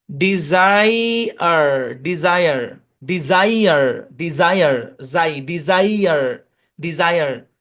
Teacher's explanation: এখানে এস এর দুই পাশে কিন্তু ভাওয়াল আছে, এই কারণে বর্গীয় জয়ের মতো সাউন্ড দিবে।